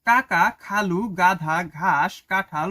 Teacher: জীভের পেছনের অংশ উঁচু হয়ে আলজীভের কাছাকাছি নরম তালুর কাছে বায়ুপথে বাধা সৃষ্টি করে সেগুলোকে কন্ঠ ব্যঞ্জন বলে।